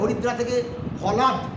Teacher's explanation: 4 নম্বর, আদি অক্ষরে শাসাঘাতের ফলে, শব্দে জোর দিয়ে শাসাঘাত বলে, আদি অক্ষরে শাসাঘাতের ফলে শব্দের মাঝের স্বর লোপ পেয়ে যায়